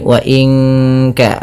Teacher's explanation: Nun mati bertemu kaf, suaranya disamarkan ke kaf ya, terdengar bunyi wa inka langsung kepada makhraj huruf ka yang dimana kaf makhrajnya pangkal lidah, kita di pangkal lidah, maka bukan wa inka tapi wa inka.